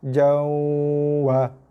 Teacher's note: so kita kurangkan sikit kadar tekanan pada huruf waw tu